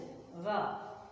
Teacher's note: लेकिन बच्चों हमें ये ध्यान देना ये है, अगर हम इनका उच्चारण करते हैं, जैसे यदि हम रा का उच्चारण करें, जैसे हम रा का उच्चारण यदि करते हैं तो रा कहने से रा हमारा जो जीभ होता है पलट के ऐसे गोल हो जाता है, यानी उलट जाता है, लुंठित हो जाता है। तो इसीलिए इसका नाम भी रख दिया गया है लुंठित व्यंजन।